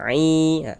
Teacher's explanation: mad thabi'i panjang dua harakat